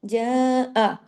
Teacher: जिम, ये बारीक है लेकिन मद को खींचना, ऊपर मद है ना, जा, हमजा जबर आ, एक हरकत है, इसको नहीं खींचना।